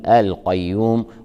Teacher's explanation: لكن لو فرضنا أن الوقف كان اختبارا أو وقف عارض للسكون، نضغط الياء لبيان تجديدها. القيوم لام التعريف قمرية، تظهر مع حرف القاف